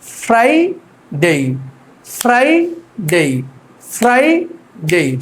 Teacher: উপরের দাঁত নিচের ঠোঁটের সাথে লাগিয়ে হালকা বাতাস বের করে